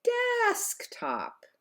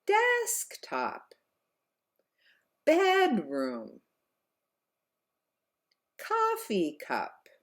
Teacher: could you hear how my voice was higher on those first words of these compound words · compound nouns which are nouns that are made up of two separate words with a higher pitch on the first word